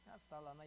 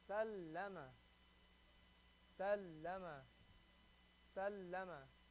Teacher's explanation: You have to hear that lam. The lam in the middle has to be mushaddad. Has to sound like it has a shadda.